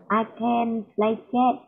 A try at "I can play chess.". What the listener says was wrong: Chess. Yes.